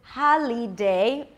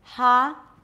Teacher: Is it holiday, like most non-native speakers will pronounce it, or can we drop the li to a schwa, l? Now try it out loud with me.